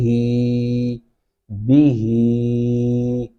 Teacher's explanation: इसको मोटा हा पढ़ते हैं, सीने से भारी आवाज में निकालेंगे